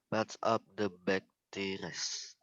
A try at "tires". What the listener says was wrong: Tires ya. Tires. Bukan tires tapi tires. R-nya agak-agak hilang gitu ya.